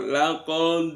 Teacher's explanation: Laqad itu dalnya dibaca qolqola kubro · Laqad itu dalnya dibaca qalqalah kubra, laqad. Kemudian haqqal ada al berharokat sukun atau alnya ada al ta'rif yang bertemu dengan qaf, maka alnya dibaca idhar koma riyah.